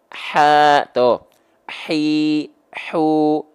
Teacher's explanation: lemah mengakibatkan suaranya mengalir karena suara mengalir punya sifat hams maka nafas yang mengalir bukan hanya percikan tapi mengalir nafas